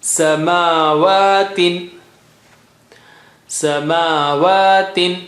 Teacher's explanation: Ma and waw, mim and waw both have standing fatha. You got to give equal stretch for both.